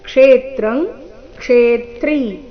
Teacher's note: ಕ್ಷೇತ್ರಂ ಕ್ಷೇತ್ರೀ ಎರಡೂ ಶಬ್ದಗಳಲ್ಲಿ ಕ್ಷೇ ಈ ಅಕ್ಷರದ ಮೇಲೆ ಆಘಾತ ಬರಬೇಕು. ಕಾರಣ ಮುಂದೆ ತ್ರ ಮತ್ತೆ ತ್ರಿ ಸಂಯುಕ್ತ ಅಕ್ಷರ ಇದ್ದ ಕಾರಣ.